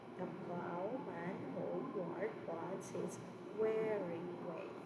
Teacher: Unstressed, stress, unstressed, stress, and the pattern goes on and on. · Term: iambic food